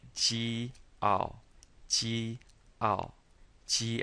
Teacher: this is a fourth tone so we say it quickly and falling